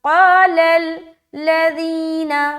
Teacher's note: قال قاف اور الف دونوں موٹا ادا ہوگا